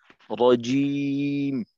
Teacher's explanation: জিম তো জাহারের হর, বাতাস বের করা যাবে না। কিন্তু আপনি এই অংশে মুখের কাছে হাত নিয়ে এই উচ্চারণটা একবার করেন, রজিম।